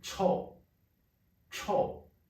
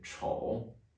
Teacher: one is four tone Cho and the other one is third tone Cho